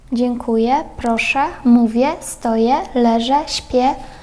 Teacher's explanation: наприкінці слова «ем» дуже часто, звичайно, поляки не вимовляють. Більшість поляків не вимовляє «ем».